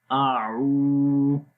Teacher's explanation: آ کی آواز سمپل رہے گی، آ لمبا نہیں کریں گے